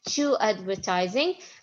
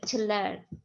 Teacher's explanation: when it's before the vowels I pronounce it like two but when it's before the consonant letters I pronounce it like T quickly